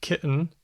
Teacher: there's glottal stop t as in kitten